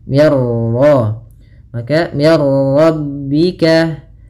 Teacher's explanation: mir ra, minnya tipis, ra-nya tebal · Idgham itu memasukkan, maka masukkan nun ke ra sehingga suara nunnya hilang. Nah, di sini idghamnya idgham kamil. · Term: bila gunnah